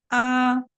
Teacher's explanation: حمزہ جب ہم ادا کرتے ہیں نا تو جو ہمارا تھروٹ ہے نہیں، حلق ہے نہیں، ہماری حلق کے جب ہم 3 حصے کریں گے تو سب سے دور والا حصہ یعنی کہ نیچے کا حصہ جو ہمارے منہ کے قریب ہے، یعنی کہ سوری سینے کے قریب ہے، نیچے والا حصہ جو سینے کے قریب ہے، وہاں سے جو ہے نا حمزہ نکلتا